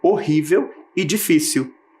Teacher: Todas as palavrinhas estavam com a sílaba tônica na penúltima posição.